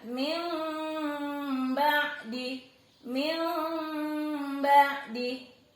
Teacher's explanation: Min ba'di dibaca min sambil agak bindeng gitu ya. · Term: iqlab